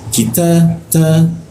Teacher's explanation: Ki ada hembusannya. Kita ta itu ada bocor tipis ya. Udara berhembus tipis.